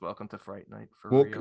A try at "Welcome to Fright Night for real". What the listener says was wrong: Well, yeah, but he didn't roll the R's. Night. For real.